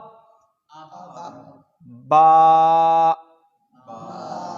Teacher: با کا مخرج یہ دونوں ہونٹ ہیں جہاں آواز رکی تھی